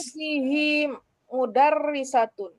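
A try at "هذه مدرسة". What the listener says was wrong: Iya, boleh. Hazihi mudarrisatun, boleh.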